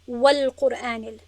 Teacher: نون، نون یعنی نون والقلم، با واوی که پس از آن آمده است ادغام نمی شود بلکه اظهار می شود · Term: اظهار مطلق